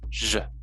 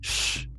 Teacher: the ZH is the voice version of SH